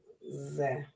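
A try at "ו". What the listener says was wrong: That is a vav. I see that was a lookalike letter. You said the letter that looks like a vav.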